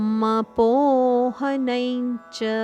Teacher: ಅನುಸ್ವಾರದ ಉಚ್ಚಾರಣೆ ಞ ಮಪೋಹನೈಂಚ